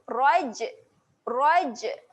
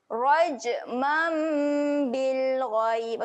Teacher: Raj, huruf jim dekat sini. Jim ketika mati, sifatnya adalah lantunan. Dia ada lantunan. Lantunkan bunyi dia.